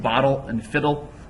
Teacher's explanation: they have a similar sounding last syllable but without a stressed vowel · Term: syllabic rhyme